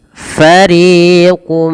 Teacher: Nah, masukkan nunnya kepada huruf mim atau tanwinnya masuk kepada huruf mim dan diganti bunyi suara mim. Jangan lagi fariqun minhum, tapi langsung mengasuk kepada mim. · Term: idgham bi gunnah